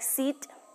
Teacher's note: for example the long e sound is a tense vowel